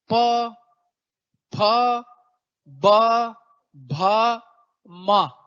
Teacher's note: फ ब भ म पांचों बार आपके ओट चिपक रहे हैं कोई रोक ही नहीं सकता दोनों लिप्स को लाक होने से चिपकने से · इनमें से पांचों व्यंजनों को आप बोल के देख सकते हैं इन व्यंजनों को आप जब भी बोलेंगे आपके दोनों ओठ चिपक जाएंगे प फ ब भ म पांचों बार आपके ओट चिपक रहे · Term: ओव्य